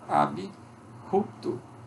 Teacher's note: Nós temos o I também depois do P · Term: I epentético